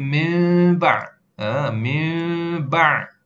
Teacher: Kita ni tukarkan jadi mim. Nun itu, nun mati itu berbunyinya macam mim. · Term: iqlab